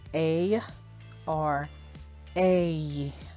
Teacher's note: This A or A is actually a glide. It goes from the short E followed by the Y sound, and sometimes, depending on your accent, by a long E sound.